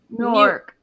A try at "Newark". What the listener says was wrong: Newark. sounds like you're saying New York very fast.